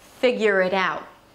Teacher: See, I just hold the air at the end.